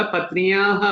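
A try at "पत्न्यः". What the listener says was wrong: దీర్ఘం లేదు, దీర్ఘం ఉండదు.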